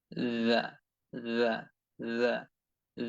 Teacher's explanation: জিহ্বার আগা সামনের উপরে দুই দাঁতের আগার সঙ্গে যুক্ত রেখে লাগিয়ে রেখে এরকম হালকা একটু আওয়াজ করে নিতে হবে এটা খুব অল্প সময়ের জন্য করতে হবে খুব বেশি সময় নিয়ে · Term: জাল